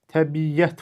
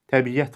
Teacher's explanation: İ-ə sait hərf birləşməsi arasına y samiti artırılıbdır. Və sözün tələffüzündə səs uzanması hadisəsi yoxdur.